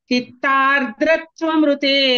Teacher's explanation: అక్కడ చిత్త తర్వాత ఫస్ట్ ఆర్ అనే సౌండ్ వస్తుంది, తర్వాత ద్ర. ఇంగ్లీష్ లెటర్ ఆర్ ఉంది కదండి, ఆ ఆర్ చెప్పాలి.